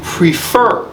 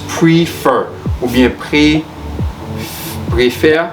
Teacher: the stress is on the second syllable or the final one since this one has only two syllables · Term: final syllable is stressed